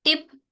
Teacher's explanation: एंड पे देखे ना, हमारे पास ग्लोटल स्टॉप आ रहा है